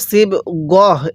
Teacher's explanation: ওয়াকফের সময় এরকম তা থাকলে ওই তাকে হা বানিয়ে পড়তে হয়